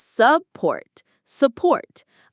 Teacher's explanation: The stress is on the second syllable,